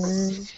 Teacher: When you say the Z sound, the Z, that's when you can feel it in your vocal cords.